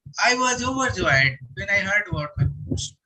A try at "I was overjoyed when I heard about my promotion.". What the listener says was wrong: a little more stress is required for the word overjoyed.